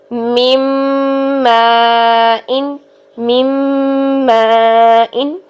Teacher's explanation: چونکہ نون میں بھی غنہ ہوتا ہے، جب نون کی آواز میم میں مرج ہوئی تو نون کی ساؤنڈ سنائی نہیں دے رہی، تو ہم میم کا غنہ کرتے ہوئے، میم پر غنہ کرتے ہوئے، میم یہ جو ناک میں گنگنے سے آواز جا رہی ہے یہی غنہ ہے